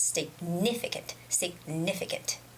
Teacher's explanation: So the stress is significant, significant, okay? The stress goes on ni, it's significant, significant, okay?